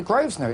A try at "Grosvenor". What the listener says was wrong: You don't pronounce the S. It's a silent S.